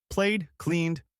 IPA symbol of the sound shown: d